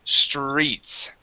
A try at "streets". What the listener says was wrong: There, that's it. Okay, good.